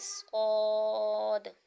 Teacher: یہ حروف مستعلیہ ہے، یہ پر بھی پڑھا جائے گا، موٹا کر کے پڑھا جائے گا